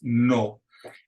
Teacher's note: it's a short, pure vowel. There's no diphthong, there's no glide to it. It's just no.